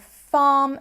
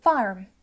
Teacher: west countes so there the r sound sounds instead like R we're using that rotic R there which I don't use in my accent